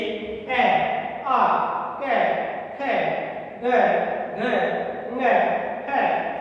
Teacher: इनका जो हमारा गला है कंठ से इनका उच्चारण करेंगे, इसको कंठ्या भी कहते हैं।